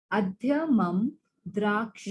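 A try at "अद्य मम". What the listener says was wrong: Mama. So we'll not say mum. We will say mama because it's no halanta there. It is full. So adya mama.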